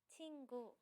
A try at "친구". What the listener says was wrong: Okay, that one's right.